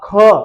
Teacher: जैसे ही कहा ख तो वायु ज्यादा आई अगर फिर कहा ग देखो फिर करके ग क्या हुआ कम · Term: महाप्राण